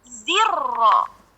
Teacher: Lamnya kebaca. Tapi karena kita bacanya adalah zirro, masuknya dari zi ke ro itu namanya idgham syamsi.